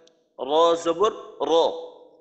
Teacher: জিব্বার আগা এমন হয় যে উপরের তালুর সাথে একটু বারবার সম্পর্ক হয়, অন্য অন্য হরফ উচ্চারণের সময় দেখা যায় যে মাখরাজের সাথে সম্পর্ক করার ক্ষেত্রে এইখানে একটা স্থিরতা থাকে, কিন্তু রর ক্ষেত্রে জিব্বার আগা একটু কাঁপে, আর আর আর এমন কাঁপা কাঁপির থেকে একটু বিরত থাকতে হবে। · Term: তাকরার